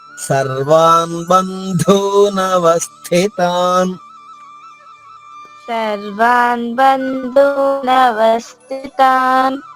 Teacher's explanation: బ అల్పప్రాణము ధు మహాప్రాణము